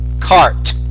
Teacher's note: if the word ends in a t a voiceless consonant the vowel is shorter cart so compare cart card fat fad